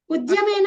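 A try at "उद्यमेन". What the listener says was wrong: మహాప్రాణాక్షరం కాదు, అదే చెప్తున్నాను నేను. అది ద ప్లస్ యా కలిపితే ధ్యా. అది విద్యాలో ఎలాగైతే ఉద్యమేన అది ధనుష్ ధా కాదు, అది ద plus యా ధ్యా. ఉద్యమేన హి సిద్ధ్యంతి. సో మీరు స్లోగా అనాలి.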